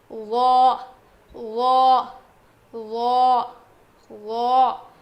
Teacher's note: زبان کی نوک کو سامنے کے دو دانتوں کے کنارے کو لگانے سے ادا ہوتا ہے